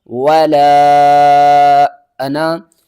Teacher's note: واو کے اوپر زبر ہے، اس کو ہم نے ہرگز نہیں کھینچنا